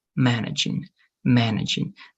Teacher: the stress has to be in the first part